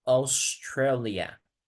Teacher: no tanto como au, sino como una o.